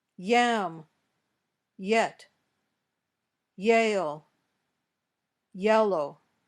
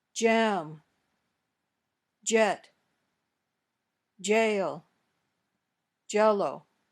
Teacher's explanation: when you say ye your tongue doesn't touch the top of your mouth when you say your tongue touches the top of your mouth